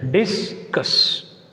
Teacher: Here the word discuss is a verb. That's why you put stress on the second syllable.